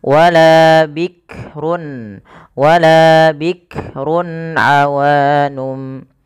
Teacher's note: Ya, hati-hati dalam melafalkan huruf kaf tidak langsung bikrun bik jangan sampai memantulkan huruf kaf karena kaf tidak punya sifat qalqalah